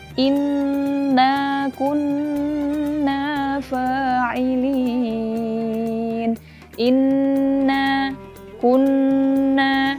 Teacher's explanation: bertasydid maka dengungnya itu harus sempurna meskipun dia di wakaf nah ghunnah Nun tasjid ini dibaca dengan memanjang atau dibaca dengan sangat sempurna